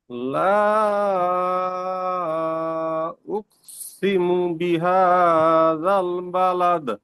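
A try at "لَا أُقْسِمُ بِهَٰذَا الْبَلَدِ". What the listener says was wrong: ওই যে আ, আ আসছে না, হচ্ছে ওই সময় আওয়াজ কমে কমে আসবে। একটা হবে একটু কমবে, আর একটা হবে একটু কমবে, তারপরে দ্বিতীয়তে শুরু হবে। لا أقسم بهذا البلد.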